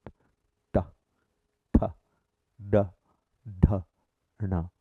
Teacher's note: The third possible position is where from you say ta, tha, da, dha, na. The tip of the tongue rolls back and then hits the center of the arch, front part